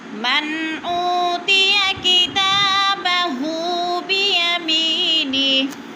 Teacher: ऊ पे वो मद्दा है, वो साकिन से पहले वो हमज़ा के ऊपर पेश है, वो मद्दा दो हरकात के बराबर खींच कर पढ़ना है।